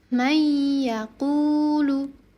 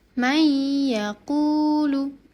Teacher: meleburkan nun sukun atau tanwin ke huruf sesudahnya disertai dengan dengung atau ghunah selama kira-kira dua harakat. Nah, huruf-huruf idgham bighunah ada empat huruf.